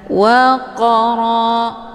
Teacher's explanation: Qaf sukun yang terdapat di pertengahan kalimat ini dinamakan dengan qalqalah sura. Cara bacanya, qafnya dipantulkan dengan pantulan ringan. Waqara, jadi pantulannya sekedar saja.